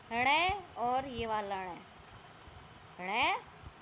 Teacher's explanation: जिन व्यंजनों के उच्चारण में जीवा की उल्टी हुई नोक तालु को छूकर झटके से हट जाती है उन्हें उत्क्षिप्त व्यंजन कहते हैं।